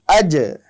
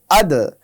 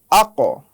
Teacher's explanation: এই বা, জিম, দাল, ত, কফ, এই চারটি বর্ণের সিফাত হলো এগুলো কলকলা, অর্থাৎ এগুলোতে আমাদের উচ্চারণে কিছুটা ধাক্কা দিতে হয় বা বাউন্স দিতে হয়